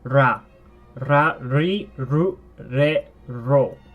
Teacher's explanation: It sounds like an R, but if you listen, it also has an L sound to it too.